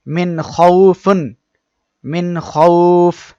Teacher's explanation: আমাদের গুন্নাহ ব্যতীত স্পষ্ট করিয়া পড়তে হবে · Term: ইজহার